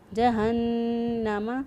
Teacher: فی ناری جہنم، جہنم، نون مشدد، نون مشدد پر ہمیشہ گنہ ہوتا ہے، اس لیے یہاں پر گنہ کرتے ہوئے نون کی آواز جو ہے وہ ادا کی۔ جہنم، اور نون کی آواز جو ناک میں ٹھہرائیں گے وہ ایک الف کے برابر ٹھہرائیں گے۔